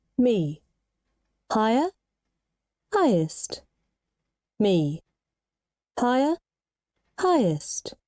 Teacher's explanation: so you see your voice needs to go higher Rising intonation